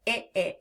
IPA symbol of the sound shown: ĭ